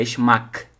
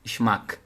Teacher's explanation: Lembrando que G no final tem som de K